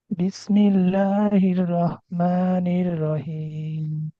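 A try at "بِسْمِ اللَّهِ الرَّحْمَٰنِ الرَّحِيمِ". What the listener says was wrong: আচ্ছা তিন আলিফ টানে এত কম দেন কেন?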